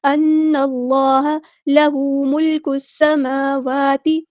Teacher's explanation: لام یہاں پر لام شمسیہ ہے، اس کو ہم ظاہر نہیں کریں گے. سین کی سیٹی ہم واضح کریں گے. میم پہ کھڑا زبر ہے تو مد اصلی ہوگی، اور واو پہ بھی حرکات مدہ ہے تو مد اصلی ہوگی. · اللہ کا لام یہاں پہ پر یعنی موٹا ہیوی ادا کریں گے